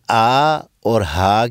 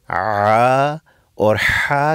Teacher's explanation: زبان تھوڑی سی پیچھے حلق کی طرف مائل ہو جاتی ہے جس سے نلی تنگ ہو جاتی ہے تو پھر وہاں سے عا اور حا کی آواز پیدا ہوتی